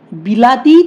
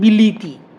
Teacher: হলো বই ল ই ত ই অর্থাৎ সবগুলো ই হয়ে গেল ল এর সঙ্গে যে আ ছিল সেটাও ই হয়ে গেছে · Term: মধ্যগত স্বরসঙ্গতি